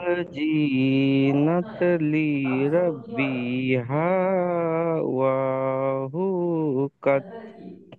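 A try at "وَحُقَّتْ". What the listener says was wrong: কাত নয় কত।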